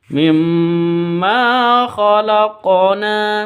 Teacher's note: Mim tasydid dengung ya, karena mim tasydidnya berdiri sendiri maka dengung. Ini disebut dengan gunnah musyaddadah.